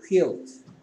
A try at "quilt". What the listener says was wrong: 안 좋았어요. 그럼 I는 뭐가 된 거지? E 된 거지.